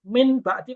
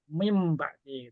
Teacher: Kalau nun ketemu ba, min bakti kan nggak enak itu di mulut. Maka jadilah mim bakti gitu.